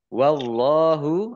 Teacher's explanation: Allahnya dibaca tebal karena harokat di depannya fathah. Lam fathah berdiri mat tobi'i panjang dua harokat.